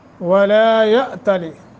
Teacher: حمزہ ساکن ہے، جھٹکا دیں گے